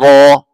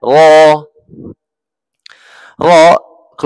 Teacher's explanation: dari hujung lidah yang bertemu langit disertai getaran yang sederhana